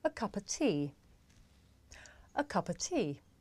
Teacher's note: the words a and of become schwa